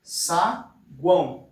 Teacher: a gente não tem 2 vogais juntas, a gente tem 3. Então a gente tem aqui no caso um tritongo.